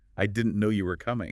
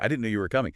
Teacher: try it with a little lift, a little emphasis on no and coming